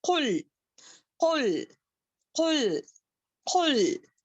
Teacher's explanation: قل قل یا ایھا الکافرون، قل موٹا پڑھیں گے، قوف کو موٹا پڑھیں گے، کاف نہیں پڑھیں گے